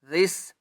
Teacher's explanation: لل ل ذال سین زیر ذس، اس یا کو نہیں پڑھیں گے، ذال کو سین کے ساتھ ملائیں گے اور ذال کو نرمی سے پڑھنا ہے، زبان کو تھوڑا سا باہر نکال کر